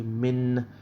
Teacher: So when you say min and you hold that nun ever so slightly, or for as long as, you'll produce a sound from the nasal, which is like a vibration sound. So what you'll do is you'll say min. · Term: ghunna